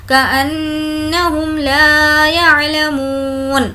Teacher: نون پر تشدید ہے غنہ ہوگا، میم پر اور نون پر تشدید ہو تو غنہ ہوگا